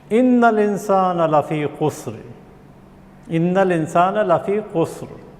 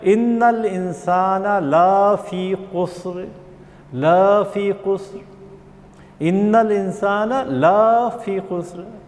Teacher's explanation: ہم نے اس کو تجوید کی غلطی کر کے تھوڑا سا لا کو بڑھا دیا